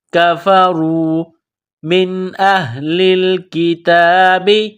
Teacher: را کے اوپر پیش ہے، را کو موٹا کرنا ہے